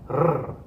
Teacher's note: Erre, okay, the tip of your tongue should flicker against the top of your mouth. It should happen 2 or 3 times. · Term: trill